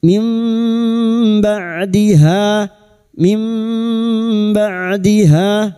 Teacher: Mim membalik seperti bertemu mim namun siap membunyikan huruf ba. Kita dengungkan selama 3 harokat. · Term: iqlab